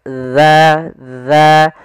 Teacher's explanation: ujung lidah kita menempel dengan gigi seri atas za. Maka wan nakhlu zatul akmam. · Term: huruf zal